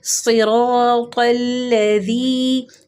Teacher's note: یا مدہ کو 2 حرکات کھینچ کے پڑھتے ہیں